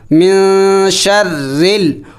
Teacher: را کو باریک پڑھا جائے گا کیونکہ را کے نیچے زیر ہے